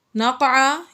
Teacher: یہاں پر قاف حروف قلقلہ میں سے اور یہ ساکن ہے، اس میں ہم نے قلقلہ ظاہر کر کے پڑھا